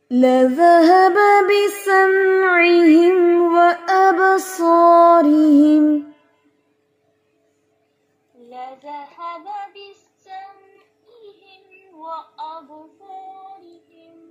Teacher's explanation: सौद यहाँ पर सिटी है यानी इसकी सी की आवाज सांस की आवाज प्रोमिनेंट होनी चाहिए। ये नहीं कि हम इसको मोटा कर रहे हैं तो सांस की आवाज खत्म, सांस की आवाज ज्यादा होगी।